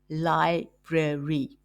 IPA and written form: ˈlaɪ.brer.i (Library)